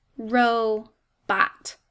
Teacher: rho is an open syllable making that long o sound and the second syllable bot is closed in by that t making a short o sound · i look closely at this word i notice it's two syllables the first syllable rho is an open syllable making that long o sound and the second syllable bot is closed in by that t